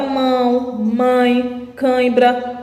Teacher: o som passa também pelo nariz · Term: nasalização da vogal